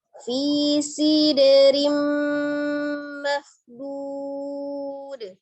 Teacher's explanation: Mahbud, ada huruf kha dari tenggorokan bagian atas tebalkan, kemudian huruf dhad juga tebal dipanjangkan menjadi mad alif disukun, dalnya disukunkan di akhir, maka dia memiliki sifat qalqalah, dipantulkan